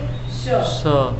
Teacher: तो श को बोलिए श, इसमें जो है तालु से जिह्वा का स्पर्श हो रहा है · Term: तालव्य स